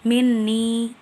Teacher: Minni, terdapat 2 hukum tajwid. Pertama, gunnah karena terdapat huruf nun bertasydid dan dibaca dengung sampai 2 harokat